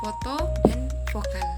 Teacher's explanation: Bunyi labiodental terjadi ketika bibir bawah atau disebut juga sebagai labium inferior menyentuh gigi atas atau disebut juga sebagai dentum superior. Udara yang keluar menghasilkan bunyi gesekan halus. Bibir bawah bertindak sebagai artikulator aktif dan gigi atas sebagai artikulator pasif.